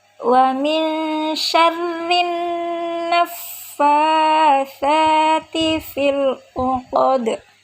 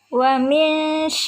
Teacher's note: Wa min ikhfa hakiki, dibaca samar sebab ada nun sukun bertemu dengan huruf shin